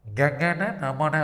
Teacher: கங்கன நமன அப்படின்னு சொல்லும்போது நம்முடைய மூக்கு வைப்ரேட் ஆகும். அதாவது பார்த்தீங்கன்னா அதிர்வுறும். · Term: மெல்லினம்